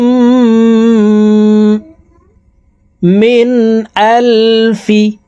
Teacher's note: এই নুন সাকিন কে গুন্না ছাড়া স্পষ্ট করিয়া পড়বো